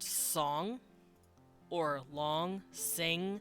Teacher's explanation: it's that n noise if you don't pronounce the g at the end like sing because we don't it's just sing it's a really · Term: nasal n and veiler